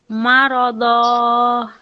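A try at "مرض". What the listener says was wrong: এত লম্বা হয়ে যাচ্ছে কিন্তু, আবার পড়েন। হ্যাঁ এখানে ধন, দদ দিবেশ দন, কিন্তু মারো ধন না পড়ে দ পড়ছেন কেন, আমাকে বুঝিয়ে দেন তো।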